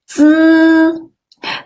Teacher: The tip of your tongue touches the back of your upper teeth.